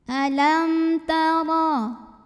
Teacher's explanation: Huruf ra dibunyikan secara tafkhim karena ra berbaris fathah. Maka cara bacanya ditebalkan. Ra pangkal lidah angkat.